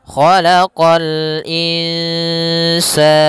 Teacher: Khalaqa sama qa juga huruf isti'la pangkal lidah terangkat